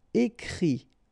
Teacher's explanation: And then the IT, phonetically you pronounce I because final T is not pronounced